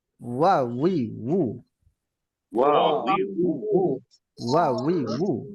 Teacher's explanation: ওয়াও এ পেশ থাকলেও ঠোঁট গোল হবে, জবর জের থাকলেও ঠোঁট গোল হবে। ওয়াও সর্বাবস্থায় ঠোঁট গোল।